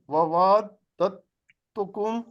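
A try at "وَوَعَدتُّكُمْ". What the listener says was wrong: نہیں، اب دال اور تے کو چونکہ مخرج ایک ہے تو دال پہ شد ہے اور دال پہ جزم ہے، تے پہ شد ہے۔ اب دال کو نہیں بلایا جائے گا، دال یہاں پہ آواز نہیں دے۔ وَعَدتُکم، ہاں جی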